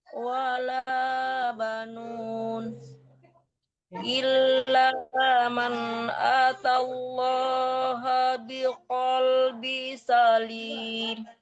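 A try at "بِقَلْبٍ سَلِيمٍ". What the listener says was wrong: Bannya tanwin ya Bu, dahulu ya Bu. Biqalbin salim. Antara ba tanwin disamakan ke sin. Bin salim dan berdengung.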